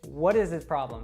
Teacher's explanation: we have the American T there happening because the T Falls between what and is so it becomes what is what is and then the s